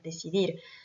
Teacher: Donc l'accentuation se fait sur la dernière syllabe. Decidir, c'est forcément la dernière syllabe également, puisqu'on a un mot qui se finit par une consonne qui est ici un R.